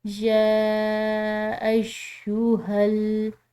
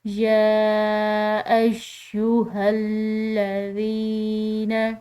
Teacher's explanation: جو یا کے اوپر کھڑی زبر ہے اس کو ہم نے کھنچاؤ دے کر پڑھنا ہے، لمبا پڑھنا ہے، جبکہ جو بڑی زبر ہوتی ہے اس کو کھنچاؤ نہیں دیا جاتا، لمبا نہیں پڑھا جاتا۔